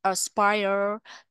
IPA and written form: əs'paiə (aspire)